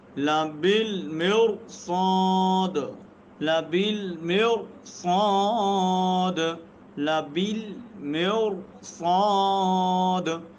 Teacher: را ساکن ما قبل کسرہ اس کے بعد حروف مستعلیہ صاد آ رہا ہے تو را کیا ہوگی؟ موٹی ہوگی.